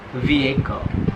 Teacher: Jadi di situ huruf H-nya nggak dibaca